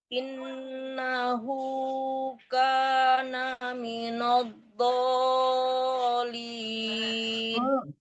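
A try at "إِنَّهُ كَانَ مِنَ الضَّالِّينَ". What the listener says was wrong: Lamnya belum tasdid Bu. Jangan minadh dhalin. Ditahan lam tasdidnya ya. Minadh dhalin. Ya, setiap huruf yang ada tasdidnya ditahan dulu sebentar.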